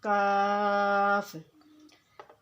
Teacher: ज़बान की जब तालु के सख्त हिस्से से टकराएगी तो काफ़ अदा होगा